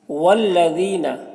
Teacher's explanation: ذال کو باریک پڑھنا ہے اور یا مدہ ہے، اسے ایک الف کے برابر کھینچیں گے